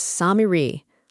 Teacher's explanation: Now, compare that to what we're trying to explain. The Arabic word is Samiri, long a then i then long e.